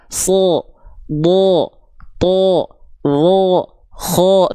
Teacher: Kalau huruf tebal ketika dia berharakat baris atas dia tidak akan terdengar seperti vokal A, tapi dia akan terdengar seperti vokal vokal vokal O